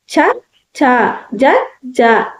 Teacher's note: నాలుక పైన దవడ భాగాన్ని తగులుతుంది కాబట్టి దీన్ని తాలవ్యాలు అంటాం.